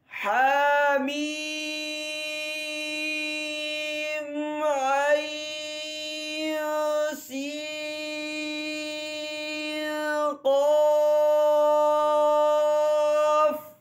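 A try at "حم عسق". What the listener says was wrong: اچھا حامیم کے آخر میں جو میم آ رہا ہے نا اس میں وہ صرف غنہ آنی ہی کرنا ہے، زیادہ لمبا نہیں کرنا، زیادہ لمبا نہیں کرنا. حامیم عین.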